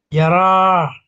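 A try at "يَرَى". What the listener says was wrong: Yaro. Yaro, ya bacanya Pak. Panjangnya yang dia ya.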